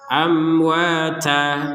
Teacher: Kalau berhenti maka panjangnya ta dua harakat